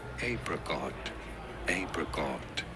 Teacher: You do want to stress on the first syllable.